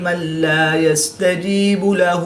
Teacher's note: نون ساکن کے بعد لام حروف یلملون میں سے ہے، تو یہاں پر ادغام بلا غنہ ہوگا، یعنی غنہ نہیں کریں گے